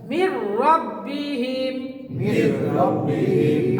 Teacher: তাহলে মির এই নুন সাকিন থাকলো না, এই রয়ের তাসদিদ এসে এটা মিলে গেল, রর সাথে মিললো গুন্না ছাড়া · এখানে মিউ ওয়াও আসার কারণে গুন্না হয়েছে। এখানে র আসার কারণে গুন্না হয় নাই।